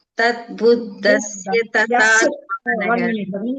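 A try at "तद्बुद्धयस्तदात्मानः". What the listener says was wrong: There one ya is there, you are missing that. Tadbuddha yastadatmanah. Ya is there. Tadbuddha yas.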